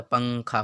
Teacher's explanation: جب ہم زبان کے نوک زبان کو یعنی زبان کے نوک کو تالوں سے ہٹائیں گے تو نون کی آواز خود بخود ناک میں چھپ جائے گا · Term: اخفاء